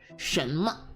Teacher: it uses the upward second tone and the light fourth tone. So 什么.